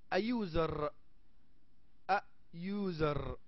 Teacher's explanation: لاحظ ان الصوت يبدا وكانه y ليس you. User كانه y هيك تلفظ user.